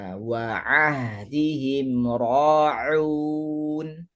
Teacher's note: Jangan lupa untuk huruf ain, pastikan ain kita betul-betul ditekak, bukannya di rongga hidung.